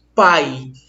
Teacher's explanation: quando eu fecho meu nariz, eu percebo que esse som não tem interferência nenhuma. Se houvesse interferência nas minhas vias nasais, isso aqui trepidava. · Tampa o teu nariz rapidinho e pronuncia. Você percebe que não há nenhuma trepidação nas vias nasais. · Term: ditongo decrescente